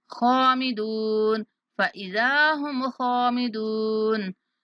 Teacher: यहाँ खा और दाल को खींचेंगे क्योंकि खा के बाद अलिफ मद्दा और दाल के बाद वाव मद्दा